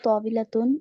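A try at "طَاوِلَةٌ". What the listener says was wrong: তাওয়িলাতুন, তাওয়িলাতুন, ওই তটা টান নেই।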